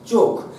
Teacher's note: খ মহাপ্রাণ, অল্প প্রাণ কয়ে পরিণত হচ্ছে, তাই এটাকে আমরা বলছি ক্ষীণায়ন।